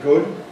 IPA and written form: gʊd (good)